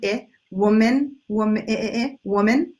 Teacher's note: second syllables either a schwa or a short I sound